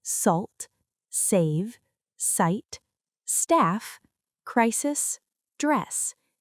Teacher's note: The letter S is most commonly pronounced s, as in salt, save, sight, staff, crisis, dress. This is a voiceless sound with continuous airflow. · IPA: /s/